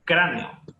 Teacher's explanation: Dos vocales abiertas, cada una tiene su golpe de voz, pongámosle así, su separador en sí, la verdad. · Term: hiato